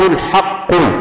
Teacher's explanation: الحق هنا القاف فيها قلقلة